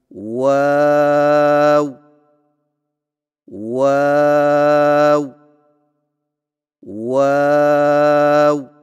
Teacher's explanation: ہونٹوں کو چونچ کی مانند گول کرتے ہوئے باریک آواز میں پڑھیں، یعنی واو واو واو۔